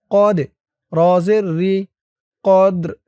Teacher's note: এই দালটা কলকলার হরফ ধাক্কা দিতে হবে